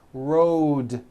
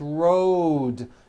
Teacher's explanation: Road also has a voiced D ending.